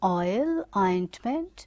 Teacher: Now oi, you can see here this oi, like in oil, ointment, it is starting at this point, okay, and then it is a glide from a back rounded vowel between open and half open to a centralized front unrounded vowel just above the half close and half open.